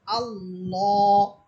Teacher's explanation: same একই নিয়ম, একইভাবে আপনারা আল্লাহ শব্দটাকেও ওইভাবে মোটা করে পড়বেন, আকার ছাড়া পড়বেন, মুখ ভরে উচ্চারণ করবেন, হালকা একটু উপরের দিকে ধাক্কা দিয়ে পড়বেন এবং আওয়াজটাকে মোটা করে পড়বেন